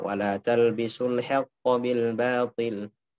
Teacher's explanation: Dijaga ketipisan ha dan ketebalan huruf qaf. Ketika kita jaga ketipisan huruf ha, hati-hati jangan sampai malah qafnya ikut tipis.